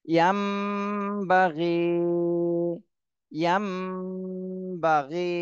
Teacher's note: ই- এখানে নুন সাকিনের পরে ইকলাবের হরফ বা এসেছে, এই জন্য এই নুন সাকিনকে এই মিম বানায় ফেলতে হবে। মিম বানায় তারপরে গুন্না করতে হবে, তাহলে এখানে আর নুন পড়া যাবে না, এই মিমটা পড়ে গুন্না করতে হবে।